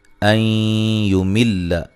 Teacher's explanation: نون ساکن کا ادغام مع الغنہ ہے